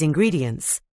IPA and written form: ɪnˈgriːdiənts (ingredients)